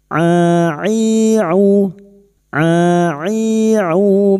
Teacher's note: huruf ain wastul halqi makhrajnya yaitu tengah tenggorokan